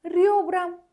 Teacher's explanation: Amma röbra sözündə R-nı daha incə tələffüz edirəm.